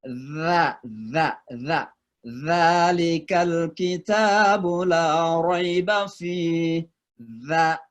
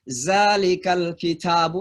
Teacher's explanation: Orang Mesir membaca dza dengan za. Ya. Kadang ada orang Mesir membaca Al-Quran alif lam mim zalikal kitabu, itu sudah salah.